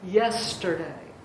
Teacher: And a dactyl is sort of the opposite of an anapest. It's one stressed syllable followed by 2 unstressed syllables, as in yesterday.